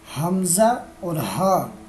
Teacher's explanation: حمزہ اور ہا یہ دونوں حلق کے آخری حصے سے ادا ہوتے ہیں۔